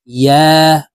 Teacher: ইয়ার উচ্চারণ জিহ্বার মধ্যখান থেকে পড়তে হবে।